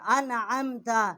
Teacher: عین جو ہے وسط حلق سے اس کا مخرج ہے